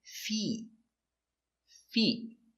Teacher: more f e Fe T Fe again a stop T Fe not the short I not fit but the long e